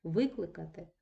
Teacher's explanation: наголос змінився у нас на перший склад перейшов і утворився дієслово доконаного виду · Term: зміна наголосу